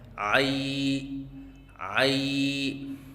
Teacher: لفظ عائی کا بار بار 3 الف کے برابر لمبا کر کے اس طرح مشق کروائیں